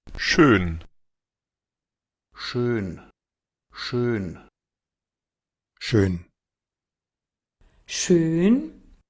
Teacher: Pareciera como que le agregan una n. No suena la N puramente.